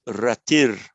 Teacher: It's just the visarga morphing into a r.